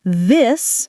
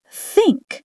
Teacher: The th sound, it can be voiced like this or unvoiced like think.